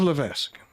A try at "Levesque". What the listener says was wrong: My name is it's actually Levesque. The S is silent.